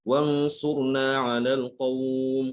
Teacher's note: ketika kita berhenti pada mad lin seperti ngalal qaum, maka ini juga harus 2 harokat, tidak boleh melebihi ya.